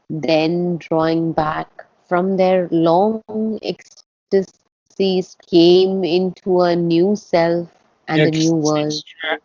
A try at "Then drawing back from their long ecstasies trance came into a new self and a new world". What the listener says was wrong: Ecstasy's trance. You didn't say the word trance. You just dropped it by accident.